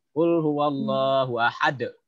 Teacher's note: huruf qalqalah di akhir kalimat yang hidup dimatikan. Jadinya qalqalahnya kubro, besar.